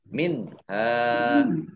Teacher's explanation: fathah alif mat tobi'i, panjang 2 harokat.